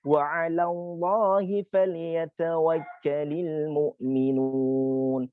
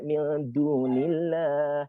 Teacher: Jadi dia punya tarqiq kalau dia terletak sebelumnya adalah huruf kasrah, berharokat kasrah. Sementara ketika dia sebelumnya adalah berharokat dhamma atau berharokat fathah, maka lafaz jalalah itu atau huruf alif lam itu dia dibaca tebal